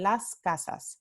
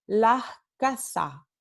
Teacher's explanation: Y luego elisión significa omisión, significa no se pronuncia para nada. Entonces, en el andaluz, este fonema s, en algunos casos se puede pronunciar con aspiración o con elisión. Este fenómeno o estos 2 fenómenos siempre ocurren al final de la sílaba.